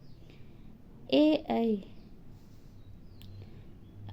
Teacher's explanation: ए और ऐ का उच्चारण स्थान है कंठ तालव्य